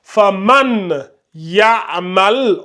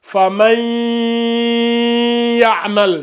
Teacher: c'est ça on appelle la runna, le nasillement, voyez-vous, ça se fait ici au niveau du nez. quand vous prenez vos deux doigts, là, vous appuyez au niveau de vos deux narines, là, vous allez les sentir vibrer au moment de faire la rouna.